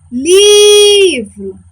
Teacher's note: Eu demorei mais tempo falando a sílaba li do que a sílaba vro. Então, li é a minha sílaba tônica.